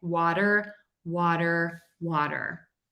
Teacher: So that T in water is technically a flap T. Just think about pronouncing it as a D, and that's going to help you.